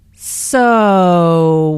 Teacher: notice how the O sound is drawn out here, combined with the intonation which shows boredom